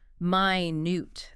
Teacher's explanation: Stress on the second syllable minute. That's the adjective meaning very very small tiny.